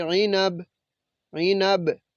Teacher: اگر ہم ادھر وقف کریں گے تو پھر اس کو پڑھیں گے عینب، عینب۔ تو با پہ پھر قلقلہ کرتے ہیں